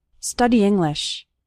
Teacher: study English study English those two words kind of run together the E from study and the I from English kind of combine